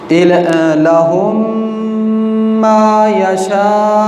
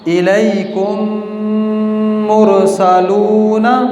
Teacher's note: میم کو دوسرے میم سے ملا کر غنّے کے ساتھ پڑھیں گے